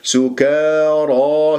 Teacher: قبلها كاف مفتوح، ما الطبيعي حركتين، الراء مفخمة الياء مفتوحة، سكارى، شوف الألف بعدها فخمت تبعا للراء ، وما الطبيعي حركتين لأن ساكنة قبلها راء مفتوح، ولا تقول